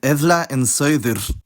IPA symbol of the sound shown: θ